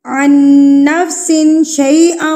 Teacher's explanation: پھر سے نون مشدد آ گیا تو ہم نے کیا کرنا ہے، اس پہ غنہ کرنا ہے